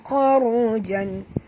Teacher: huruf kha tebal ya dan ra juga tebal.